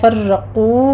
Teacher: فرقو میں را مفخم پڑھتے ہوئے قاف بھی پور پڑھا جائے گا، آگے واو مدہ ہے، دونوں ہونٹوں کو گول کر کے ادا کرنا ہے۔